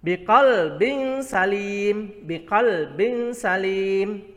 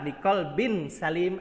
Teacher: dibaca samar karena tanwin bertemu dengan huruf sin. Ya, ini tanwinnya yang berada di bawah kemudian bertemu dengan huruf sin. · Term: ikhfa hakiki